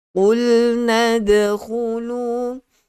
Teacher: Huruf qaf itu mestilah dia keluar daripada pangkal lidah. Okey, mula-mula permulaan lidah sehingga pangkal lidah ini keluarnya huruf qaf.